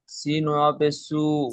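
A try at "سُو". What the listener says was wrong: সিনটা 3 আলিফ টান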